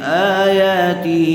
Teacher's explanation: آیا حمزہ اور یا دونوں کے اوپر کھڑا زبر ہے اس لیے دونوں کو برابر کھینچیں گے